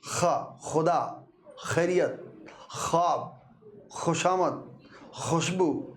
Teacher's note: प्राण वायु घर्षण के साथ बाहर निकलती है।